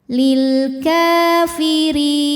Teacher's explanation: Hamzah wasalnya dibuang karena kemasukan lam jar, lam dengan harokat kasrah. Lil ka mad tabi'i muqaddar karena kaf berharokat fathah panjang. Cara bacanya dipanjangkan 2 harokat.